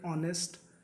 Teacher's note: the sound of H becomes silent and we use a.